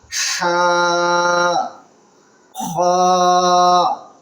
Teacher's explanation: बिल्कुल हलक से गले के निचले हिस्से से